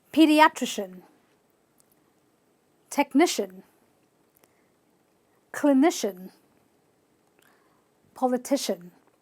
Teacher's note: Any word that ends with C-I-A-N will indiscriminately be pronounced at the end with a shin.